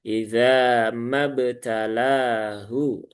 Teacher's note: Iza, ma, dua harokat kalau sendiri ya. Nah, karena di sini ada pertemuan dua huruf sukun, yang satunya huruf mat, maka huruf matnya dihilangkan ya, tidak dibaca menjadi satu harokat.